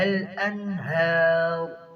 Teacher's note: ہار را کو موٹا کریں گے وقفا میں